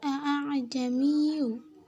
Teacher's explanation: Karena terdapat 2 hamzah yang berjejer, dan untuk cara membaca hamzah pertama biasa, sedangkan hamzah kedua dengan samar-samar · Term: tashil